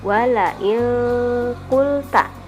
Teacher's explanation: Qaf itu huruf ikhfa, jadi nun matinya dibaca samar-samar